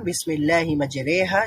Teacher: সেখানে শুধুমাত্র মাজহুলের উচ্চারণটা হয়, অর্থাৎ একারের উচ্চারণ হয়। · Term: ইয়ায়ে মাজহুল